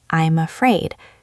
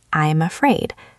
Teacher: usually we connect the m sound in I'm to the a sound in afraid.